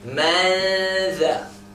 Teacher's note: The noon sort of hidden with the letter after it. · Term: ikhfa